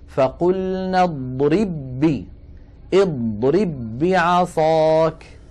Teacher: اضرب آخرها باء ساكنة، بعصاك أولها باء متحركة، فهنا لابد من إدغام الباء الأولى في الثانية، ويكون النطق بباء واحدة مشددة، نطبق الشفتين على الباء الأولى ونفتحهما على الباء الثانية